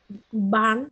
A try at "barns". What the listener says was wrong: Barns. It has letter S, so it should be barns. barns.